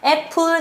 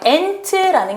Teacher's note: A를 가지고 읽었습니다. 애플, 그래서 A는 입을 크게 벌리고 내는 에